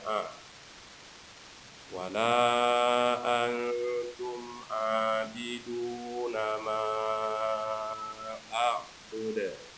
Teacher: ada huruf ain yang berharokat 2 atau disebut mat 2, maka dibaca 2 harokat